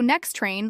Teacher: So next train links the T in next to train.